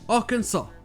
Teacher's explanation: le reste du mot est prononcé à l'américaine, mais cette subtilité du S muet est restée jusqu'au nom de l'État de nos jours.